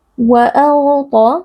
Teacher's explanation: huruf ghain dan huruf ta sama-sama huruf tebal kita angkat pangkal lidah